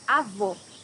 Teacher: here you have a close o